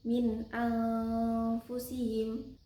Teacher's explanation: Jadi bacanya samar-samar dengan dengung. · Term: ikhfa